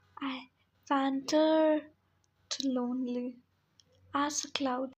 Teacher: This piece contains a regular meter. There are 8 syllables per line, and the stress falls on the second syllable of each foot. There are 4 iambs in each line. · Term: iambic tetrameter